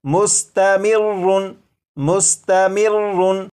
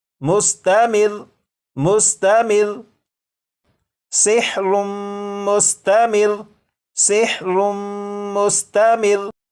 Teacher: लेकिन जब वक्फ में पढ़ेंगे तो ये जो लफ्ज़ है इस लफ्ज़ के रा के ऊपर जो तशदीद है इसे तो पढ़ेंगे, लेकिन रा के ऊपर जो 2 पेश हैं इन्हें ख़त्म कर देंगे